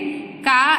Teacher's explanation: का एक कंठ्य व्यंजन है